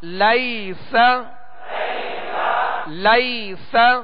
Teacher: لام یا زبر لی سین زبر سا لیس لیس. یہاں یا لین ہے، اسے نرمی کے ساتھ بغیر کھینچے بغیر جھٹکا دیے معروف پڑھیں گے